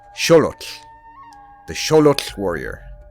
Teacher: The way that the Aztecs, or the Mexica, as one of the names they called themselves, would have pronounced this word in Nahuatl is Xolotl, the Xolotl warrior, with the emphasis on the first syllable, and the X pronounced as SH · The final two consonants are a little trickier, but think of the L as extremely abbreviated. A pause and exhale immediately after putting the tongue in position to pronounce the L, and with absolutely no hint of the U or O sound